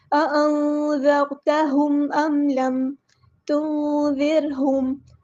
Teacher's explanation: یہاں پر نون ساکن کی آواز کو چھپا دینا ہے کیونکہ نون ساکن کے بعد ذال ہے، ذال کو ہم نے سختی کے ساتھ نہیں پڑھنا، زر نہیں کرنا، زر نرمی سے ادا کرنا ہے، باریک ادا کرنا ہے۔ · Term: اخفا